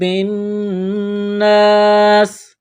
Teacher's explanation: نون مشدد ہے، غنہ کریں گے، آواز ناک میں چھپائیں گے۔ · الف سے پہلے زبر ہے، ایک الف کے برابر اس کو کھینچنا ہے۔ سین میں سیٹی کی آواز پیدا کریں گے، سین کو باریک کرنا ہے۔ یہاں پر وقف کریں گے تو سین کو ساکن کریں گے۔